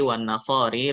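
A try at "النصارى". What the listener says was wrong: Nasara masuk Nasari sih.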